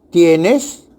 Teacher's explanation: en la palabra tienes es una entonación ascendente, porque el sonido o tono va de menos a más.